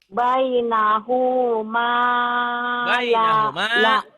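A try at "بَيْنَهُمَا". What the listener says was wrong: Hunya pendek.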